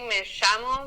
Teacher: we say me llamo because the double L, we pronounce it as a sh sound